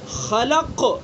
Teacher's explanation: احق کے مقابلے میں خلق کے اندر کم قلقلہ ہو رہا ہے۔